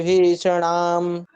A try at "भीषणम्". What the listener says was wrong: भीषणाम नहीं, भीषणम। मात्रा देखिए, धीरे धीरे एक शब्द पढ़िए ना, जल्दी क्या है? अड़ा पे है, भी स पे नहीं है ना।